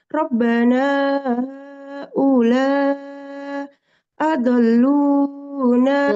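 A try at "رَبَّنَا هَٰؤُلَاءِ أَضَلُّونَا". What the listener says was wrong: ulai adallu ada i-nya haulai adallu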